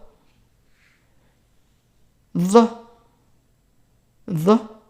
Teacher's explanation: So it's a TH like as in that. However, it's also pronounced in the back of the throat. The. This one does not exist in English.